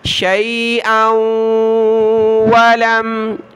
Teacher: حمزہ کو واو کے ساتھ ملائیں گے، ناک میں آواز پیدا کریں گے